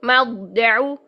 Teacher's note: تو دیکھیے ضاد کے لیے کیا ہوا کہ زبان کی جڑ اوپر، زبان کا وسط اوپر، اور زبان کا تو اپنا مخرج بھی حافہ لسان ہے، سائڈز بھی اوپر، سارا کچھ، ساری زبان اوپر چلے گئی ہے، ٹھیک ہے۔ موٹا ترین ادا ہو رہا ہے ضاد، ٹھیک ہے، مضجع، ٹھیک ہے، اس طرح سے۔